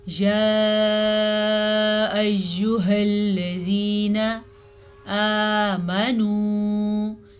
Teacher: زال کو نرمی سے پڑھنا ہے اور یا مدہ کو کھینچ کے پڑھنا ہے